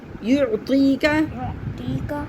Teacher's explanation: ٹی نہیں ہے، تی. زبان آگے لے کے رہیں. یعطیک.